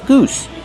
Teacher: Goose plus the s sound with no voice.